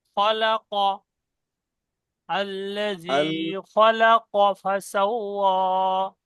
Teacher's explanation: মুখটা একটু গোল হবে, খ পুরো অক্ষর, কফ পুরো অক্ষর